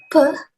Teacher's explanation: it is a bilabial stop, voiceless sound